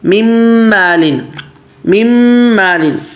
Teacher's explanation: اب یہ نون میم میں مدغم ہو رہا ہے